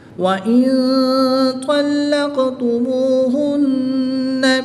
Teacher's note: نون ساکن کے بعد طا حروف اخفا میں سے ہے تو یہاں پر اخفا ہوگا، یعنی غنہ زمانی کر کے پڑھیں گے